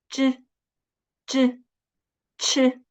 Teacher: When saying 知 and 吃, the tongue tip first touches the hard palate and then opens the gap to let the air flow.